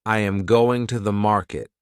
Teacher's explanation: the strong words are going and market. The small words are softer. This pattern creates rhythm.